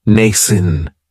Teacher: It has the long A sound, nascent. That second syllable has that schwa